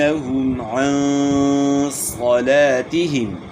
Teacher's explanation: ہم میم ساکن میں اظہار ہوگا، غنہ نہیں ہوگا